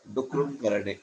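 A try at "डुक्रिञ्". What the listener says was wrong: करणे इति नास्ति, डुक्रि कृ डुक्रि एवं। Dukri. Cha cha ja ja. This fifth letter they used to use a lot those days. Even in Pali, Prakritam, all the languages, they used to use this fifth letter.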